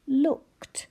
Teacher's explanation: one of those words that sounds like it ends in t. But that is one of the sounds for suffix ed.